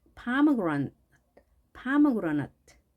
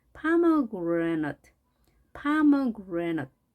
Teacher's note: 이 A를 A로 강하게 발음하지 않고 pomegranate, pomegranate 약하게 하시면 되겠습니다.